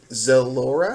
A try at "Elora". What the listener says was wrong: Elora with an E. The Z is silent.